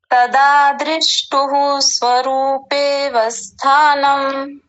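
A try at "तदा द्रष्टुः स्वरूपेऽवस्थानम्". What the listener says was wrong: आपने बोला दृष्टुहु, दृष्टुहु नहीं, द्रष्टुहु।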